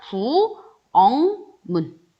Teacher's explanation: 기역과 같은 위치에 있는 비음인 이응으로 변해요